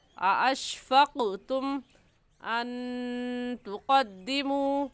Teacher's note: क़ाफ़ पर कलकला करेंगे